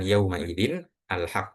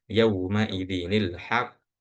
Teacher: Jadi tanwin bertemu hamzah wasal itu nanti ada nun iwat di sana dibaca nun kecil.